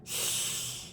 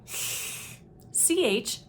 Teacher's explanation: the air is escaping laterally over the sides of the tongue rather than down the center of the tongue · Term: lateral lisp